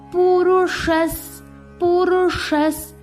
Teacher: ஷா ரெட்ரோஃப்ளெக்ஸ். ஷா நாக்க மடிச்சு உச்சரிக்கணும். இஸ்ல முடிக்கணும்.